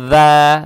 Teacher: эту фатху, которая над буквой «даль», мы должны тянуть два раза за счет вот подсказки. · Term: маттоби'и